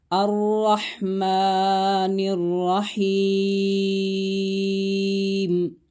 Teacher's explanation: کھڑا زبر ہے، 1 الف کی مقدار جتنا کھینچ کر پڑھیں گے۔